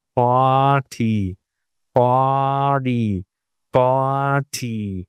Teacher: if you have a vowel plus an r in British English it becomes a long vowel